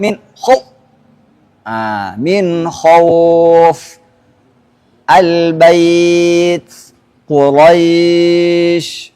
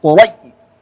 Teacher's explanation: Waw sukun, ya sukun sebelumnya berharakat fathah. Duna syiddatin, tanpa syiddah, tanpa ditekan.